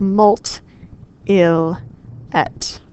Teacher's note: The M is not strong enough to separate the U and the I, so those actually elide.